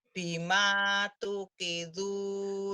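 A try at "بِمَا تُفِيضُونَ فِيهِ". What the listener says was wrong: Bukan bukan tukidu, tufidu, bukan tukidu, fa. Bima bima tufiduna fihi.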